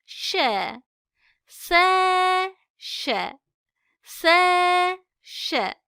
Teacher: Sen ş ş ş ş harfimiz bir ortası üst damar yükseltip yapıştırmadan fısıltılı bir şekilde çıkarılır harfin sesi ağız içinde yayılır